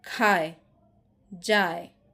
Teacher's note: এখানে আটা উচ্চারিত হচ্ছে সবটা, এটা পুরোপুরি উচ্চারিত হচ্ছে না। তাহলে এখানে আ হচ্ছে পূর্ণ এবং এ হচ্ছে অর্ধ, এবং দুইটা মিলে হয়ে যাচ্ছে দ্বি স্বরধ্বনি।